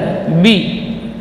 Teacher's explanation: Kemudian ba huruf syiddah dan jahar, bi, bibirnya dirapatkan, bagian luar, bi.